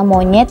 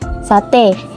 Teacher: fonem e dengan alofon terbagi dua yakni e Tengah atas tak bundar depan dengan e Tengah bawah tak bundar depan